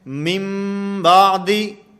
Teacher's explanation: نون کو میم سے بدل کر پڑھیں گے، نون کو میم سے بدل کر پڑھا جائے گا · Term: اقلاب